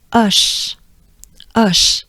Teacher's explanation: Ush, ush. So it's a pretty open ah, again, similar to I'm in awe, with a soft sh, ush, ush. There you go.